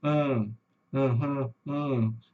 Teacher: O chuá, pessoal, é um sonzinho que eu brinco que é o som do adolescente eh aborrecido, do adolescente entendiário, que você fala com ele ali, ã, a ã, entendeu? Esse som do an, que é um a que não sai aberto, que ele não sai com força, ele sai aquela coisa pela metade.